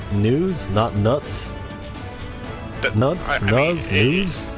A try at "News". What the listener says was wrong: Nuts would insinuate a T in there somewhere. a Z has a Z sound.